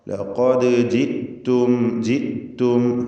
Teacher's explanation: ലഖദ് ജിത്തും, ജിത്തും ഹംസ ഷിദ്ദത്തിൻ്റെ അക്ഷരമാണ്, അത് ജീത്തും എന്നോ ജീത്തും എന്നൊന്നും ആവരുത്. സാക്കിനത്തായ മീം ഇൽഹാർ ഷഫവി നൽകി മണിക്കാതെ വെളിവാക്കണം.